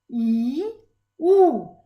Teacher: Our tongue is moving from the front to the back. The highest part of the tongue is moving from the front to the back.